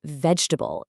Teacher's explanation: It completely drops an entire middle syllable